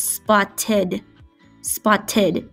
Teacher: so the Ed would make the ID sound okay spot tid